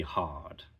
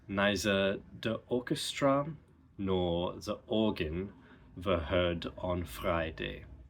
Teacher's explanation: R is dropped in the same words that they'd be dropped in a British accent